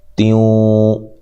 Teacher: یہاں نون تنوین کا ادغام مع الغنہ ہے